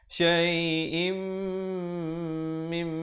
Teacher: Yang sebetulnya kena syai'im mim, dengung di situ. Im berdengung, mim pun dengung 2 harakat.